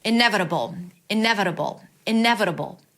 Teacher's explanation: That's a flap t, so it sounds like a d. B. It's a B sound, a schwa, and a dark L.